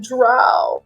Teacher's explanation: What would that be? Hold on, I have to like vocal fry my voice here